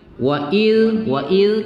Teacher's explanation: kita baca agak lembut sedikit tidak usah didesis kuatkan tidak kuat desisnya